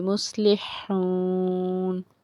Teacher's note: وقف کریں گے آگے 3 الف سے 5 الف کے برابر اتنی مقدار میں اس کو کھینچ کے پڑھیں گے